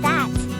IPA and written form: ðæt (That)